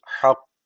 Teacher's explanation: Şeddeli bittiği için birazcık vurguluyoruz